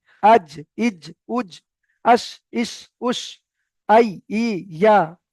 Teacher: এবার দেখেন জিম শিন আর ইয়া, এই জিম শিন ইয়া জিভের মাঝখান ওই সোজা উপরের তালুর সঙ্গে লাগবে। আজ, ইজ, উজ, আস, ইস, উস, আই, ই, ইয়া, এমন ভাবে পড়তে হবে।